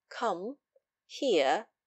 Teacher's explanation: the voice being level with a slight falling inflection as when we say come here in our imperatives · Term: even sound